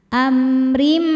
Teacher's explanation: Am ada hukum izhar syafawi karena mim sukun menghadapi huruf ro ya bukan mim bukan ba maka mim sukun dibaca dengan izhar atau jelas